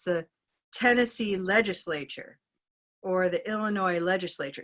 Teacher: We'll have a phenomenon called syllable hopping, where the syllable will hop by 2 syllables forward because the next word has the stress in the first syllable. So it's a way to kind of pad that we don't want 2 big stresses to come up against each other.